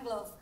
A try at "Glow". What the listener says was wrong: Glove tapi belakangnya bukan pakai E tapi W.